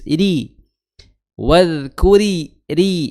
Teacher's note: ro di sini rnya tipis karena memiliki memiliki harakat kasrah jadi tipis. Iri wadkuri ri ya tipis ris masuk ke sin ya maka dia muncul sifat saofirnya ya saofir atau berdesir. · Nah, ro di sini ro-nya tipis karena memiliki harokat kasroh, jadi tipis.